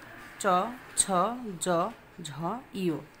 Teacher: চ বর্গীয় বর্ণ এর উচ্চারণ স্থান তালু